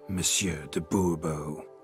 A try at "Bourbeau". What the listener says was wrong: The emphasis falls on the last syllable.